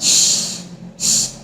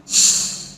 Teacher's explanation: Shh, shh, because I do not vibrate my vocal cords. So this is unvoiced post-palato alveolar sound.